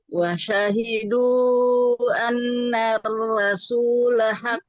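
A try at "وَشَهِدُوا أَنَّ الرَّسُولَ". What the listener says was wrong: Tidak anna rasulah. Ro. Ro-nya tidak jadi huruf ra.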